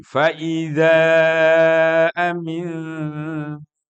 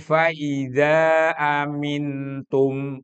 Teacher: Nun mati bertemu dengan ta. Maka harus disamarkan. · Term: ikhfa